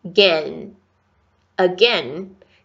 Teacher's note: E último som, ó, gente, tem som de N? A língua toca o céu da boca.